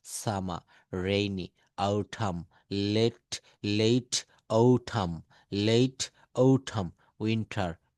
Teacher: বাক্যের শেষে বা শব্দের শেষে আর থাকলে ব্রিটিশরা এই আর এর উচ্চারণটা করে না, ব্রিটিশরা আর এর উচ্চারণটা করে না।